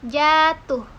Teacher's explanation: silaba pertama pada kata jatuh, diucapkan panjang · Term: durasi